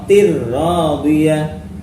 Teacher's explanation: Tanwin kasrah bertemu ra, tir-radiyah. Diidghamkan tanpa dengung, idgham bila gunnah namanya